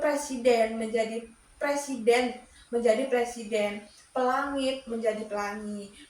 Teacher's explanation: Kemudian ada apokov. Apokov ini proses penghilangan atau pemenggalan satu atau lebih fonem pada akhir kata